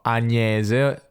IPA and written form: Aɲese (Agnese)